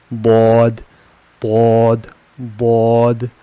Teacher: When I pronounce here bod, I am touching my tongue on the back side of the upper teeth.